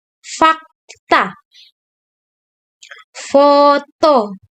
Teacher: Lalu pada huruf konsonan F, bunyi F, contoh katanya fakta dan foto, yaitu bunyi gesekan antara bibir bawah dan gigi atas